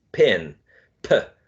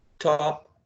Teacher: P is aspirated in initial position. In final position, is not. So since it's not aspirated, we don't use that small symbol here that looks like an H.